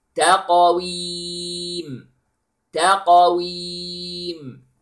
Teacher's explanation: the ta is light, then the qaf is heavy with qalqala, and then ween, all the letters are light. Okay, it is not taqa ta ta taqa.